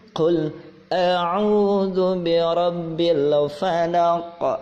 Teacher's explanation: Karena ada huruf qaf di akhir kalimat, maka difantulkan. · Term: qalqala kubra